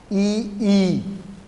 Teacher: ई बोलते हैं, तो ई में क्या है, जीभ तालू की तरफ ऊपर की ओर उठ जाती है